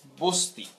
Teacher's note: ব্যঞ্জন লোপ এটা না, কারণ এখান থেকে স্বরধ্বনি আমরা লোপ পেতে দেখেছি। এখানে একটা স্বরধ্বনি ছিল, এই স্বরধ্বনি সেটা হচ্ছে অ, এই অ স্বরধ্বনিটি লোপ পেয়ে এটি হয়ে গেল বস্তি। সুতরাং এইখানে স্বরধ্বনি লোপ পেয়েছে এবং এটাকে আমরা বলছি সম্প্রকর্ষ বা স্বরলোপ।